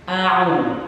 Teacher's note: Huruf yang pertama dibaca rileks, santai, tidak ada penekanan. Adapun huruf yang kedua adalah huruf ain, dibaca dengan tekanan. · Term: huruf hamzah dan huruf ain